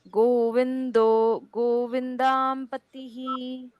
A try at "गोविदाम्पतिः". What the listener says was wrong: बाद में गोविंदा नहीं है, गोविदाम ऐसे है। वो पहला शब्द गोविंदो है इसलिए वो जाता है वैसे।